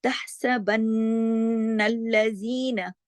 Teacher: نون پہ تشدید ہے، یہاں پہ غنہ ہوگا اکمل. تحسبن الذین اس طرح سے پڑھا جائے گا.